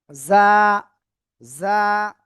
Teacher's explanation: জিহ্বার আগা সামনের নিচের এই যে দুই দাঁতের পেট ও আগার সাথে লাগাতে হবে লাগিয়ে এই অক্ষরটা উচ্চারণ করতে হবে ঝিঝি পোকা যেমন ডাকে এরকম